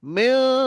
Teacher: আর ইখফা কথার অর্থ হচ্ছে লুকানো। তানবিন নুন সাকিনটা নাকের মধ্যে লুকিয়ে রেখে গুন্না করব।